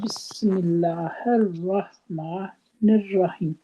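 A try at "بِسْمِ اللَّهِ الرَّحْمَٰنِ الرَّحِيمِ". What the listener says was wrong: رحیم، ہیم کو بھی پورا کریں نا.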